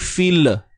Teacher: Kalau kita cepat sangat, okey, hujung lidah kita memang dah naik fil, tapi bila kita jatuhkan ataupun kita lepaskan hujung lidah kita dengan terlalu cepat, dia akan jadi fil. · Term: tawallud